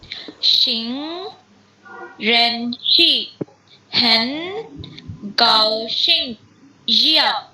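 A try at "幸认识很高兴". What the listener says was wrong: Excellent.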